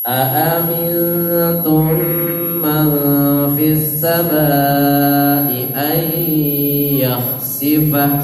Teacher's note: Didengungkan, dimasukkan rongga hidung, namanya khayshum.